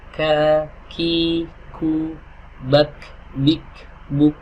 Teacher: Adapun huruf kaf pangkal lidahnya bertemu dengan langit-langit yang lunak dan langit-langit yang keras.